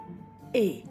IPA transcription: ɛ